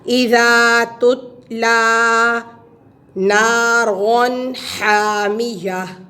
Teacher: یہاں تا حروف قلقلہ میں سے نہیں ہے، اس لیے اس کو ہلانا نہیں ہے. تتلا نہیں پڑھنا، اس کو آرام سے پڑھیں گے.